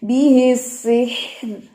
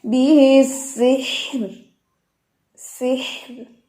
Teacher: زبان انسان اٹھا لیتا ہے لیکن یہاں پہ کنٹرول کر کے زبان نیچے رکھنی ہے کہ را موٹی نہ ہو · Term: را باریک